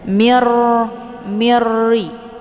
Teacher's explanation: Jadi cara bacanya dileburkan ataupun dimasukkan dengan tiada berdengung. Jadi cukup ditekan saja, tidak perlu ditahan. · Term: idgham bila gunnah